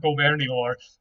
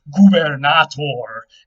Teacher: French has changed a few things. It weakened the B to a V. It dropped the T in the middle of two vowels, and then eventually we ran those syllables together, but it's still recognizably the same word.